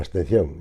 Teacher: ya me comía la B directamente